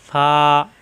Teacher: উপরে দাঁতের আগা নিচের ঠোঁটের পেটে লাগিয়ে ছেড়ে দিলে হয়ে যায় ফা